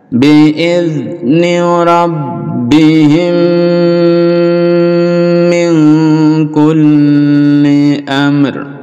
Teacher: mim sukun bertemu dengan mim jadi dilebur jadi satu Idam Mimi lalu didengungkan dan dipanjangkan dengungnya biidzni rabbihim Min kulli